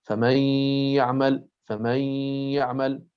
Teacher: في الياء والواو لابد أن يكونا بنفس القوة، يعني يخرج عندنا صوتان في آن واحد، ياء من الفم وغنة من الأنف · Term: صوت الغنة